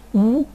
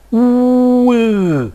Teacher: seven and finally we have to produce Cardinal vowel number 16 first of all Cardinal 8 with rounded lips ooh and then I will unround my lips ooh and here we are with the primary and second secondary